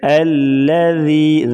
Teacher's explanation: بعض لوگ پڑھ دیتے ہیں الذی، یہ ایسے پڑھنا غلط ہے، الذی ذال کو نرمی کے ساتھ پڑھیں گے، اور یہ جو یا ہے یا مدہ ہے، یا ساکن ہوگی اس سے پہلے زیر ہوگی تو یا مدہ ہوگی، اسے بھی 1 الف کے برابر کھینچ کر پڑھیں گے، یعنی لمبا کر کے پڑھیں گے۔